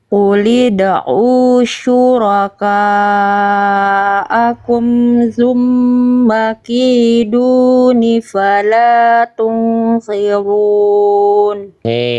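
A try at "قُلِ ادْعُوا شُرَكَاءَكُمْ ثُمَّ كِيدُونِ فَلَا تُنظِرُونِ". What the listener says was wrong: Hati-hati sa di sini agak melipir ke zal. Jangan zumma, su, keluar nafasnya. Su.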